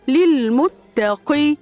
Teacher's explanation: قاف متحركه بالكسر من حروف التفخيم تفخيم نسبي للمتقي ياء مد عارض للسكون جائز اثنين او اربع او ست · ياء مد عارض للسكون جائز اثنين او اربع او ست حركات